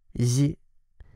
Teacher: This is a more forward version of the English Z.